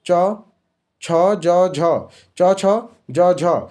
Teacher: च छ ज झ ये तालव्य व्यंजन आ गया।